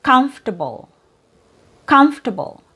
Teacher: So the last two vowel sounds are reduced. Now it looks like it has four syllables but when you hear this word you only hear three syllables.